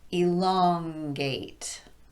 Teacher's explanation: I didn't raise my pitch, I just stretched out the stressed syllable